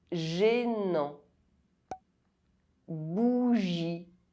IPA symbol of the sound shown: ʒ